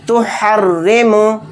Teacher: यहाँ पर राय मुशद्ददा के नीचे ज़ेर है तो रा को बारीक पढ़ेंगे।